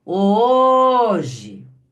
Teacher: Perceberam que o som da sílaba O é o som que mais tempo eu fiquei pronunciando, que se estendeu? Por isso que ela é a sílaba tônica.